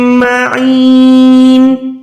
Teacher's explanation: معین، عین کو یا کے ساتھ ملا کے لمبا کریں، حلق کے درمیان سے نکالیں۔ نون دو زیر ہے تو نون کو ساکن کر لیں کیونکہ یہاں پر ہم وقف کر رہے ہیں